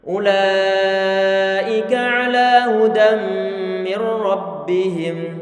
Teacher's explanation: Hukumnya wajib dibaca melebihi kadar 2 harokat, 4, 5 ataupun 6. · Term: mat muttasil